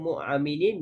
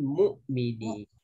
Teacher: Pada kalimah mu'aminin, jangan mu'aminin, mu'minin. Bulatkan. Jangan ada pantulan qalqalah.